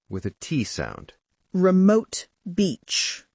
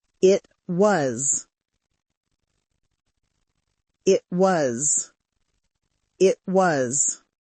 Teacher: In my modern British accent, I often replace the T sound at the end of a word with this glottal stop. So remote becomes remote.